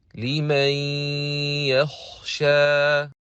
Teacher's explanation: When we read Idgham with Ghunnah, we don't pronounce all the sound from the mouth. It should be distributed half from the mouth and the other half, which is the Ghunnah, from the nasal passage.